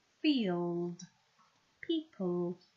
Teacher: there's that dark L because it's following the vowel sound. Feel, much more of my tongue, it's almost touching all the way around.